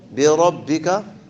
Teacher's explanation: الراء مفخمة لأن هذا الكسرة غير لازم